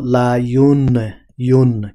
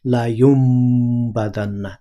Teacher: নুন সাকিন মিম দিয়ে পরিবর্তন করা হচ্ছে